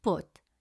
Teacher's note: it makes a short uh sound with lips rounded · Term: short U sound